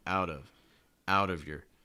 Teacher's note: Out of, you notice that linking with the fast D sounds